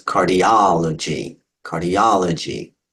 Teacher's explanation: If we change that a little bit to cardiology, okay, you break that into syllables, cardiology, count backwards, the ultimate, penult, antepenult. It's the O or the aw sound that gets the emphasis.